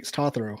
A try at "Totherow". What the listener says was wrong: No, it's actually, it should be a U instead of an O if you're pronouncing it. So it's Totherow instead of Totherow. So it's Totherow.